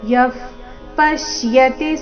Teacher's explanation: ವಿಸರ್ಗದ ಉಚ್ಚಾರಣೆ ಅರ್ಧ ಫ ರೀತಿ